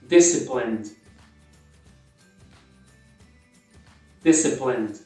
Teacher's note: Em inglês é bem comum, você corta o E